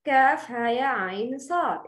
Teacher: If a mad letter is followed by a second letter, both of them being present in the same letter, the reader is required to prolong the mad letter. This mad must be prolonged 6 beats. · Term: mad lazim harfi mukhaffaf